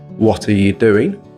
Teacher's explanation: 'Are' becomes /ə/ when it's sandwiched between words. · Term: weak forms